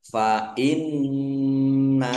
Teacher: Hak fathah alif, mat tobi'i, panjang 2 harokat. Fa inna, nun tasdid dibaca gunnah atau mendengung, ditahan biar tampak mendengungnya.